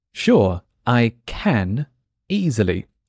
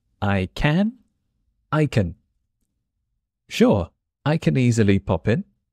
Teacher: The word can becomes much shorter and it's very hard to catch.